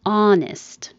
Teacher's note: You don't say the H at all, just the vowel ah. Honest. Straight ah.